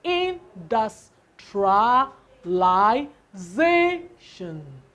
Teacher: You stress the word, the second from the back.